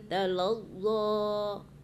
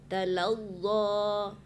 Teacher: Makhrajnya itu di ujung lidah, di tempat gigi susu tumbuh.